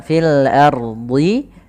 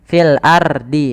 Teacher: Ro sukun sebelumnya fathah maka dibaca tebal. Kemudian di, huruf do jangan di. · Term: ro tebal